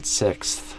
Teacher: just kind of barely touching the tongue tip to the kind of the back edge of your upper teeth. Just somehow you get some sort of vibration, friction kind of between your tongue and your upper teeth, even if it's just a very subtle bit.